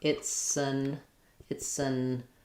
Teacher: So, it'll sound kind of like it's an it's an um a short little I or almost no vowel there